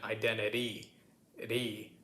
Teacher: So the T sound, the second T sound, which my British cousin over here pronounces with a proper clear T, we would turn that into a bit of a tapped T, which sounds kind of like a D, although it's not really a D, because a D is a proper, like you hear the sound D, identity.